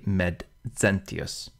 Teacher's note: you really want to split the X right down the middle the Z is really a D and S put together